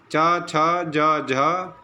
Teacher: च छ ज झ तालव्य शकार, इनका उच्चारण स्थान क्या है, तालु है